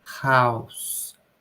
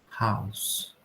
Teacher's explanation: A gente vai ter o som do H, ele não gera uma vibração na garganta. Então, se a gente falar house, o ele não vai gerar uma vibração na garganta. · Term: unvoiced